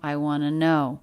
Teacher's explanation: I diphthong right into the W consonant sound. Schwa of wanna, right into the stress word no.